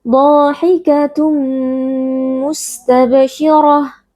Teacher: Dha huruf tebal kita baca dengan mengangkat pangkal lidah. Lalu di sini pada dha ada mad tabi'i karena ada alif yang sebelumnya berharakat fathah, kita baca panjang 2 harakat.